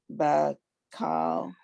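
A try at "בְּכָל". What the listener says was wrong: Okay, remember that's our big exception, that word. It's always like a long O, bechol.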